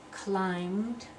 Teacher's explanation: that B is not pronounced, so we have the M sound